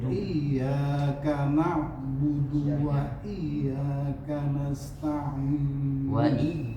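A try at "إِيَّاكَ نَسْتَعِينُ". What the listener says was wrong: Iyyaka nas, iyanya panjang sedikit lagi.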